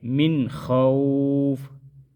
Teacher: من خوف ادھر اظہار حلقی ہوگا، ادھر غنہ نہیں کریں گے